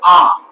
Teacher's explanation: আবার দেখো আ, আকে আমরা বলি একেবারে এই অংশটাকে আমরা যদি ধরি তাহলে এটা আমরা লিখবো এভাবে যে এটাকে বলা হয় কেন্দ্রীয়, কেন্দ্রীয় স্বরধ্বনি আ, অর্থাৎ না পশ্চাৎ না সম্মুখ, একেবারে সেন্টারে অর্থাৎ কেন্দ্রীয় জায়গা, সেন্টার এই জায়গায় উচ্চারিত হয়, তাই একে বলা হচ্ছে কেন্দ্রীয় স্বরধ্বনি।